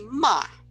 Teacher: if you say ma that's flat but you can say ma that's your pitch that goes down you can say ma it's a peach that goes up or